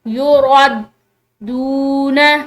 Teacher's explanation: ये दाल को प्रेशर के साथ पढ़ेंगे क्योंकि दाल यहाँ पर मुशद्दिद है, ठीक है। एक दफ़ा तो ये पीछे वाले हर्फ यानी रॉ के साथ मिलकर पढ़ा जाएगा और दूसरी दफ़ा अकेला।